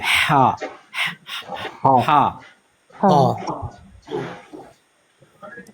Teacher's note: یہ آپ کے حلق سے آواز نکلے گی بڑی باریک سی.